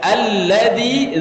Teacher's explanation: Alladzi, zi-nya panjang 4 sampai 5 harokat